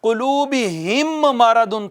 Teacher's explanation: قلوبہم مرض تھا، ہم مرض، تو ہم کی میم ساکن تھی، ساکن میم کے بعد چونکہ میم آ گئی تو میم کو میم میں مدغم کر دیں گے، شامل کر دیں گے، ضم کر دیں گے۔ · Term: ادغام